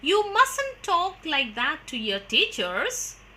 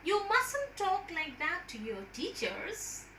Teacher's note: a statement intended to be a warning and to express concern. In such instances also, we use the fall-rise tone.